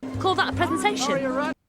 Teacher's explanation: in british english it would be pronounced presentation with an eh sound for the e at the beginning